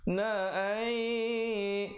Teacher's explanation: nun mati bertemu ya, dengungkan 2 harakat, masuk beserta dengung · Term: idgham bi gunnah